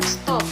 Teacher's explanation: Tetapi setelah mendapatkan S, lamino palatal pada stop. Kata tersebut diucapkan stop dengan T juga lamino palatal. Dengan demikian dapat disimpulkan bahwa T pada stop disesuaikan atau diasimilasikan artikulasinya dengan S yang mendahuluinya sehingga sama-sama lamino palatal.